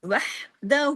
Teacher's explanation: کتنا کھینچے گا؟ واؤ مدہ کے برابر، دو حرکات